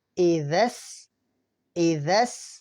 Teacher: حمزہ زیر ای، ذال، سین زبردس، اذس. اس لفظ کو بہت دھیان سے پڑھنا ہے کیونکہ ذال ہمیں نرمی سے پڑھنا ہے اور سین ہمیں سختی سے پڑھنا ہے